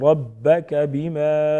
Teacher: با مشدد ہے، مضبوطی کے ساتھ ذرا رک کر ادا کریں گے ، بما الف مدہ، الف مدہ ایک الف کے برابر کھینچیں